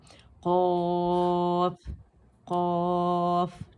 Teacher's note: तो ज़्यादा खींचने की जो रीज़न है वो ये है कि हम फ़ा साकिन है, ठीक है, यानी हर्फ मद्दा के बाद सकून असली वाला लेटर, जिसकी वजह से क़ाफ़ की आवाज़ को हम 4 काउंट्स खींचते हैं लाजमी, ठीक है। तो आप ये देखें कि ज़बान प्याला बन गई, जिसकी अदायगी हम क़ौ कहते हैं, तो ज़बान प्याला बन जाती है